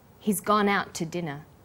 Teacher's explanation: The two is unstressed. When we link out, which is stressed, and to, which is unstressed, the final t sound in out is held slightly longer. · The t sound is pronounced only once.